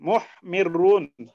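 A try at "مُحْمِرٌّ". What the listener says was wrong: কিভাবে মিরুন হবে? এখানে তো ডাবল রা, এখানে তো রা দুইটা। তাহলে কি হবে? এটা হবে মুহমারিরুন। এখন মুহমারিরুন, এখানে তো দুইটা রা আছে।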